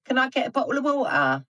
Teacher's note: some British accents, like Cockney, may use a glottal stop instead